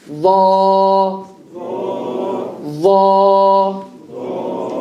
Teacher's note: Tip of the tongue between the top and bottom teeth.